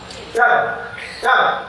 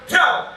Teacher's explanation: Dal itu torful lisan, ujung lidah, dalqi lisan, kena gusi juga kena gigi, zalqi lisan, dal, coba, dal. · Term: makhraj dal